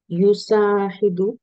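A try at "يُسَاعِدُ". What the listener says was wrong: না, আইন ম্যাডাম। হ্যাঁ, ইউসাইদু।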